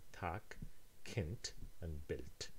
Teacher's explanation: these consonants become voiceless when the root is free and in contact with the edge of a word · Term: devoicing